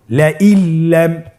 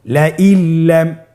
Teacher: নুন সাকিনকে আমাদেরকে পরবর্তী হরফের সাথে মিলিয়ে গুণা ছাড়া পড়তে হবে।